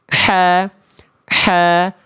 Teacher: Kalau ain nggak keluar nafas, kalau ha kecil keluar nafas. Kalau ha kecil bunyinya dari tengah tenggorokan juga, nekennya sama di situ tapi ada sifat ngalir nafas.